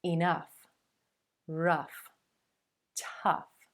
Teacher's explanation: you might hear that uh uh as in mustard plus the f consonant